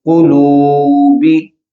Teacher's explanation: قلوبی، قلو، قاف پیش کو، جو پہلا قاف کی پیش ہے اس کو لمبا نہیں ہونے دیں گے